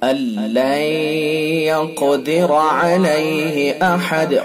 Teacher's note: قاف کو پر کریں گے، پر یعنی موٹا، اور قلقلہ بھی کریں گے قاف کے اندر، ٹھیک ہے، اور را کو پر کر کے پڑھیں گے.